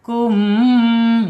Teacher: Kum masuk ke hidung, selain mengatup ya, selain asyafatain 2 bibirnya tertutup, ini al khaisum masuk hidung ya, rongga hidung. Ini al khaisum.